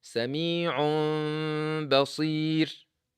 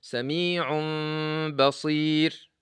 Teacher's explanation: Then, when you have this meme, you hide the meme. You hide the meme and produce a sound coming from the nose called غنة.